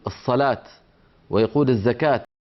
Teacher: بعض العرب هنا في الجزيرة العربية كأهل منطقة الرياض وما حولها يعاملون هذه هاء التأنيث تاء